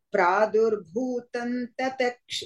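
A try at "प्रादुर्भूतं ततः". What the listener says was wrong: Tataha. No. Pradurbhutam only. Tataha you said. Tataha you say the full visarga.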